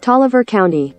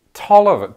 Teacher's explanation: does Georgia just not believe in pronouncing the final vowel in a word